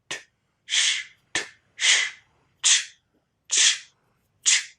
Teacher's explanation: Of course, these are a pair, voiceless ch and voiced j. And so, for the voiceless affricate ch, we combine the voiceless stop t with the voiceless sibilant sound sh